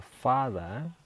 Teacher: strongnya itu ada di fa di silaba pertama